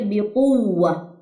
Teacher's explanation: نبر ہے یہاں پہ, ٹھیک ہے, بقوة, ٹھیک ہے, آواز کو ریز کریں کیونکہ واو تشدید ہے اور پیچھے پھر پیش ہے